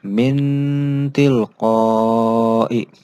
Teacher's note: Nah, ini bacanya seperti huruf N. Jadi nunnya tetap terbaca dengan sedikit ada dengungan. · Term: ikhfa kubro